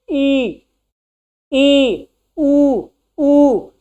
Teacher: लेकिन अर्ध समृत, जब समृत का भी आधा हो, जैसे हम बोले अगर समृत हो तो जब समृत वर्ण हम बोलते हैं तो दांत जो होता है, मुख जो होता है वो बहुत कम खुला होता है और दांत बहुत करीब